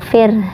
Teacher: Setelah huruf ro harus huruf ha sedikit ya